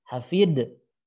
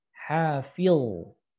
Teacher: pangkal lidahnya ngangkat, itu yang betul